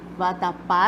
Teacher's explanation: aqui em vatapá, nós verificamos que a sílaba mais forte recai na última. Então, a gente conta aqui, vatapá, a última sílaba é a mais forte, portanto, é oxítona.